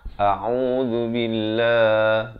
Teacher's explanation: Pastikan lafaz isti'azahnya itu hamzah baris atas bunyi a di pangkal kerongkong, ain baris dhammah bunyi au di pertengahan kerongkong, 2 harakat. Zal baris dhammah di hujung lidah zu. A'udzu billah, dan lafz jalalah dibaca nipis 2 harakat.